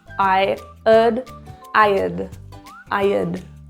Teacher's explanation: Notice I'm linking I and ud together. There's no pausing.